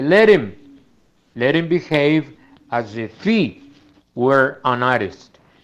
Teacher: entonces nuevamente esa H no la pronuncia en el caso de his, him, her y he. Entonces, un norteamericano, en lugar de decir let him, dice let him behave as if he were an artist.